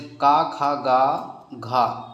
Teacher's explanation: का वर्ग जो है कंठ से उच्चारण करल जाए